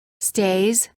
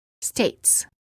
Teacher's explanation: Make sure that you pronounce the following word pairs differently. The first word contains just a s or z sound. And the second word contains a t and s sound.